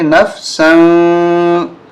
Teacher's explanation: نون فا زبر نف، سین دو زبر سن، یہاں اخفا ہوگا سین پہ، ناک میں آواز چھپائیں گے